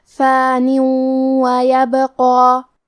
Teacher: اگر ہم یہ کلمہ کو اگلی آیت کے ساتھ ملا کے پڑھیں تو حرف الواو کلمت ویبقا دوسری والی آیت میں حروف الادغام بغنہ میں سے ہے، اور ادغام کا معنی ہے حرف کو حرف میں داخل کرنا. تو ہم یہ تنوین کو واو میں ملا کے غنہ اور تشدید کے ساتھ یہ حکم کو ادا کریں گے